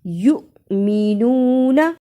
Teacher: پیش واو یو پڑھیں گے تو واو مدہ بن جائے گی، یہاں تو حمزہ ہے اور حمزہ کے اوپر جزم ہے، اس لیے اس کو جھٹکا لگا کے پڑھنا ہے